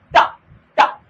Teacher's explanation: हमारी जीभ तालू में लगने के बाद वापस कंठ की तरफ जा रही है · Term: मूर्धा